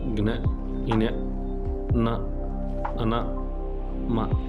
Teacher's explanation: ముఖ కుహరం ద్వారా కాక నాసిక కుహరం ద్వారా పలకబడతాయి. నాసిక సహాయంతో పలకబడతాయి. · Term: అనునాసికాలు